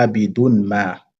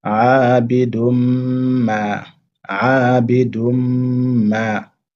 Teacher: on fait la liaison avec le mim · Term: idgham birunna